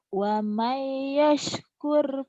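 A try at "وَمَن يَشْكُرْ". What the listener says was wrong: may idghamnya ditahan. Wa may yashkur.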